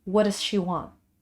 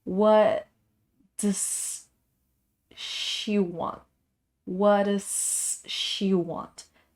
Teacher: like the T and the D sound, they almost sound like one single sound.